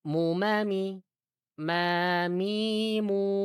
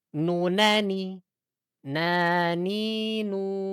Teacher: Kalau mim dia di bibir, kalau nun di toroful lisan.